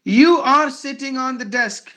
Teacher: Sitting, desk. Only these words are heard with more volume. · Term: stressed words